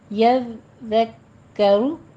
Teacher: दाल में आपने सीटी की आवाज़ नहीं लेकर आनी